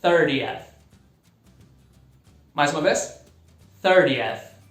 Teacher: No inglês americano some o T